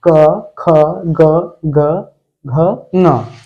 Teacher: क वर्ग का होता है कंठ से। जब आप क बोलते हैं तो जो आप उच्चारण करते हैं जब क का, तो वह आवाज या हवा आपके कंठ से आती है।